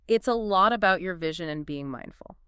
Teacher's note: Let's pay particular attention to those stopped T's in lot and about